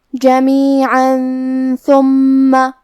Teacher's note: کلمت جمیعاً کے آخری میں عین پہ تنوین زبر ہے، پھر حرف الثا ہے، ثا حروف الاخفاء میں سے ہے تو ہمیں یہ حکم کو غنہ کے ساتھ ادا کرنا ہے · جمیعاً ثم، کلمت ثم حرف الثا کو ہم زبان کے سر اور اوپر والے دانتوں کے اندرونی کناروں سے ادا کریں گے